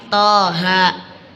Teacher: Apabila dalam permulaan huruf surah terdapat huruf selain yang 8 tadi, yaitu ha, ya, to, ha, ro, maka dibaca panjang 2 harokat. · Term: Mat lazim harfi mukhaffaf